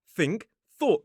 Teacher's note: They both use that voiceless th sound. So, what you need to do to make this sound is take the tip of the tongue, this bit, right here, sometimes known as the blade, and place it on the bottoms of the top teeth, like this.